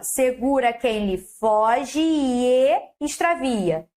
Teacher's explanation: Crase, fusão de duas vogais idênticas numa só